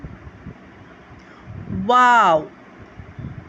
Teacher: دونوں ہونٹوں کی گولائی سے ادا ہوتا ہے